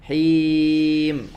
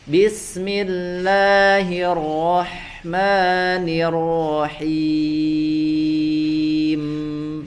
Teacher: huruf mim ya dan ba itu sama-sama dia dibaca dengan intibaqus syafatain ya, dibaca dengan merapatkan kedua bibir ya, sama-sama rapat kedua bibirnya, hanya dibedakan dengan sifat ya gunnah.